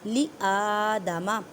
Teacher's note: حمزہ کے پر کھڑی زبر ہے اس وجہ سے ایک الف کی مقدار میں کھینچ کر پڑھیں